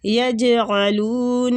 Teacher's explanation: حروف قلقلہ ہیں، جیم پہ بھی قلقلہ ہوتا ہے، جیم کی جب ساکن جیم ہوگا تو اس کی آواز بھی پلٹ کے آئے گی